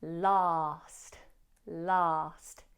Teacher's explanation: let's open the mouth wide for a long ah in last, last. If said fast, the T in last may be dropped. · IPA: /lɑːst/